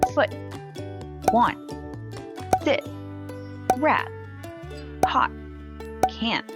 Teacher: a vowel or before consonants within a word the sound stops you just have to emphasize the preceding vowel and simply stop the sound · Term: t is stopped or held